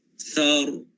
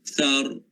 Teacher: ra ni bila berbaris fathah ataupun bila kita matikan dia, huruf sebelumnya berbaris di atas, ra ni kena tebal.